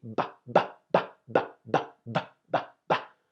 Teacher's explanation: when you make the sound, your vocal cords here should vibrate. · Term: sound of the B